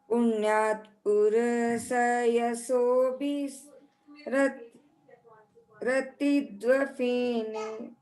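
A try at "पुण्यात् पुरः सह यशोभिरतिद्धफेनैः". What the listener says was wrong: हाँ, ध है ये, ध डबल आधा ध और फिर ध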